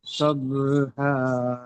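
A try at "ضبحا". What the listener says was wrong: এটা দত, দবহা, দবহা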